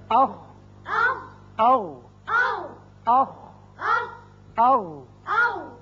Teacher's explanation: دونوں مخارج میں آواز حلق کے اوپر والے حصے میں جا کر رکی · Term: اقصی حلق